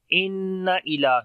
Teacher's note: نون کے اوپر شاد ہے، غنہ کریں گے، لمبا کریں گے